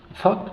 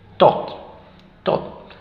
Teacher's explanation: el primero era con la lengua entre los dientes este es to simplemente una t